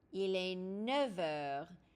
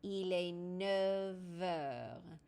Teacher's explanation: That F sort of makes a slight V sound.